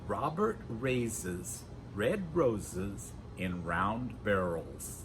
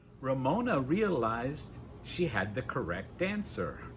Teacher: When we produce the R in English, the tongue, again, just like the Y sound, doesn't touch the roof of our mouth. Our tongue does go back, but it doesn't touch, and it certainly doesn't roll. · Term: the R sound